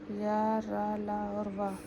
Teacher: जिन व्यंजनों के उच्चारण में मुख बहुत संकुचित हो जाता है उन्हें अंतःस्थ व्यंजन कहते हैं